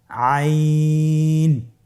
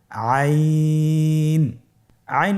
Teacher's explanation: হরফটি কন্ঠনালীর মধ্যখান থেকে উচ্চারিত হয়